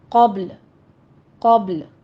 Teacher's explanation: آگے قوف آ رہا ہے، قوف کو پر پڑھنا ہے، با پر قلقلہ کرنا ہے